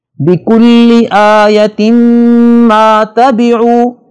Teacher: بِكُلِّ آیَةٍ مَا تَبِعُوا تا کے نیچے دو زیروں والی تنوین ہے اور اس کے بعد میم آ رہا ہے جو ینمو کے حروف میں سے ہے لہذا یہاں پہ غنہ ہوگا اور نون تنوین کی آواز کو میم میں اس طرح مکس کر کے پڑھیں گے کہ ادغام ہو جائے